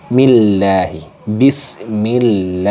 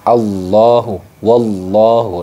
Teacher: nah kemudian di sini juga terdapat hukum lafaz Allah tarqik teman-teman lafzul jalalah tarqik Kenapa demikian karena di sini ada lafaz Allah didahului oleh harakat kasrah ini makudnya kategorinya tarqik makanya dibaca millahi Bismillahi nah seperti itu